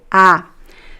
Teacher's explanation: the vowel ah as in father it's a very open Sound